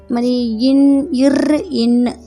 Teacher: இன் இர் இன் ஆகிய இரண்டு மெய்களுமே மேல்வாயின் நாவின் நுனி மிகவும் பொருந்துவதால் பிறக்கிறது